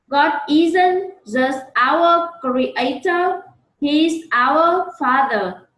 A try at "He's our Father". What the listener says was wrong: Đừng đọc our. Đọc nhẹ nhàng. Our. God isn't just our creator. He is our Father.